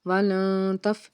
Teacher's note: یہاں پہ ہم نے اخفا کیا کیونکہ نون ساکن کے بعد حرف تا آ رہا ہے اور تا حرف اخفا میں سے ہے، تو ہم آواز کو ناک میں چھپائیں گے